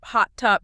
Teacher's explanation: the T in hot doesn't explode. It just cuts off the vowel. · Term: unreleased stops